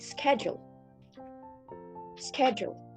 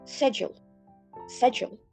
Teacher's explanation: they just eliminate the k sound and they emphasize on the first syllable, schedule. All right, I think that's all the comparison between the inner circle Englishes from UK, US, and Australian.